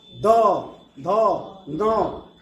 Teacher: तवर्ग का उच्चारण स्थान जो है दंत होता है। यानी जब भी हम त फ, द, ध, न का उच्चारण करेंगे तो हमारी जीभ जो है दांत को स्पर्श करेगी।